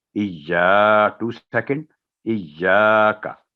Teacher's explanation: तो आगे इसके बाद है इय्याका, जहां जो गलती होती है इय्याका ना बोलो, तो ये इय्याका नहीं, इय्या, या पर तशदीद है, यानी एक पहले जज़म है इज, फिर या पर उसकी जो ज़बर है उसके साथ अलिफ, इय्याका, का की आवाज़ लंबी नहीं होगी, इय्या 2 सेकंड